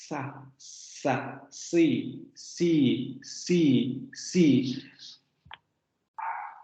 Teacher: La punta de la lengua se va a pegar hacia la zona de los alvéolos, que es donde se va a producir este cierre parcial para producir este sonido fricativo, ¿no? Y no va a haber vibración de cuerdas vocales. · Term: Fricativo alveolar sordo